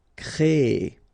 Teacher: So it's quite interesting, sorry, here, because first you will have this CRE accent aigu, so you get the créer sound, and after that you get this ER sound, so E. So technically you will have this double E sound, créer, okay, so it's longer, créer, all right?